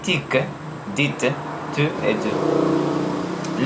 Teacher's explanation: En français québécois, on prononce les consonnes affriquées ts et dis devant I et U.